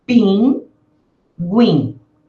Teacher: Aí, as duas sílabas são nasais.